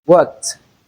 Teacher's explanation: we have the t sound in place of the ed suffix added to form the past tense form. So please do well to note this that we can realize the ed suffix as in different words and most especially it is words with a voiceless consonant sound before the ed suffix.